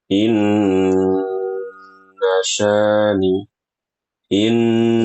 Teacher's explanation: kalau nun bertasdid itu harus di sempurnakan gunahnya ya.